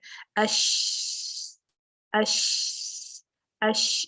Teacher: आवाज जो है ना आपके पूरे मुंह में, जहां से इसका मखरज है वहां पैदा होती है, और बिल्कुल साइडों पे आपके आप देखेंगे कि गम्स पे, आपकी गालों में, आपके मुंह में, ऊपर नीचे पूरी तरीके से ये मुंह में आवाज फैल जाती है। अश अश अश, इसको तफशी कहेंगे, आवाज का मुंह में फैलना